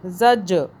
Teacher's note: جیم پہ جھٹکا دیں گے، قلقلہ کا حرف ہے